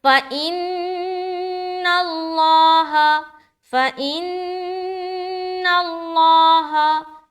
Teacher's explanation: لفظ اللہ کا لام موٹا کیونکہ یہاں پر زبر آ گیا اور ہا زبر ہا۔